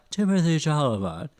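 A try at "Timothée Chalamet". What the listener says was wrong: I'm not even going to address the problems you had with pronouncing his last name, but I believe it is Timotei, not Timothy.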